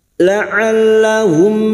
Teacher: mim sukun bertemu ya idhar syafawi mim sukun dibaca jelas tanpa mendengung mim sukun mendengung hanya bertemu dengan huruf ba dan huruf mim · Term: izhar syafawi